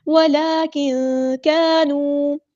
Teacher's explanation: کاف ہمارا light letter ہے، باریک پڑھیں گے